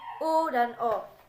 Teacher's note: vokal yang dihasilkan oleh gerakan turun naiknya lidah bagian belakang atau pangkal lidah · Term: vokal belakang